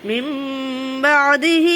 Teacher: نون ساکن کے بعد جب با آتا ہے یا تنوین کے بعد تو وہ نون کس میں بدل جاتا ہے؟ میم میں بدل جاتا ہے، اسی کو اقلاب کا قاعدہ کہتے ہیں۔